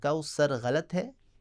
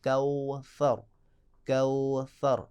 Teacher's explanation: زبان کی نوک ثناء علیہ کی نوک کے ساتھ لگے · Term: حرف ثا